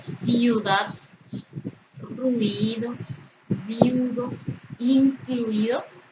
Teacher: Tenemos la unión de dos vocales cerradas, I y U. Por tanto, se forma un diptongo porque ambas son átonas.